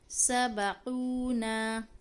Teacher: نون کے ساتھ ہمارا الف لگا ہوا ہے، تو اس کو ہم کھینچ کے پڑھ لیں گے